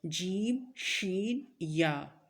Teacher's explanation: وسط زبان کا مطلب ہوتا ہے زبان کا درمیانی حصہ جب بالمقابل اوپر کے تالو کے ساتھ لگے تو اس سے جیم، شین اور یا ادا ہوتے ہیں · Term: حروف شجریہ